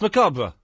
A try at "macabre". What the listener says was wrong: You don't pronounce the R. No, you don't. No, you don't. No, you don't.